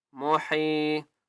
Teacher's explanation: یا مدہ ہے حا کو ایک الف کی مقدار کھینچ کر پڑھیں گے